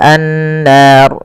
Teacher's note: ro tafkhim. Ro yang tebal. Tidak boleh dibaca dengan ro tipis.